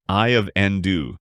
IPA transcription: aɪ əv ˈɛndə